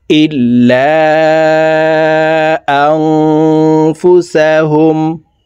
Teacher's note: এই নুন সাকিনকে নাকের ভিতরে লুকাইয়া গুন্নার সহিত পড়ব। এই গুন্নাহকে ইকফাহ গুন্নাহ বলা হয়, কারণ নুন সাকিনের পরে ইকফার হরফ ফা আসছে, এই কারণে এই নুন সাকিনকে নাকের ভিতরে লুকাইয়া গুন্নার সহিত পড়ব।